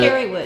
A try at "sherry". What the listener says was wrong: Sherry with the S. S and then a Harry.